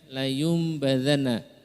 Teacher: Tulisannya layun badana nun, tapi karena bertemu dengan ba maka diganti dengan mim. Ya, di sini ada tulisan mim, maka itu menunjukkan layum badana.